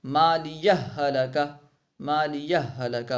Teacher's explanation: مالیہ کے آخر میں ہا ہے اور ہلکہ کا شروع میں ہا ہے. ٹھیک ہے، دونوں ہا مل رہے ہیں، ٹھیک ہے نا، دونوں ایک ہی حرف ہیں، مالیہ ہلاکہ، مالیہ ہلاکہ وغیرہ، ٹھیک ہے۔ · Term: ادغام